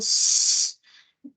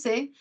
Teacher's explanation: el sonido S, que es sordo, es una fricativa alveolar sorda